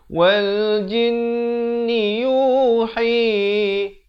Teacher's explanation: Yu 2 harakat, hi juga 2 harakat. Ha pedas, makhrajnya di pertengahan kerongkong.